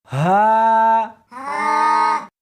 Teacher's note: اس حرف کو سینے کے اندر سے نکالنا ہے